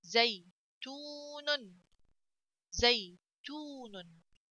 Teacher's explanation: It will be a letter of mad then. I have to stretch this letter تا which has this ضمة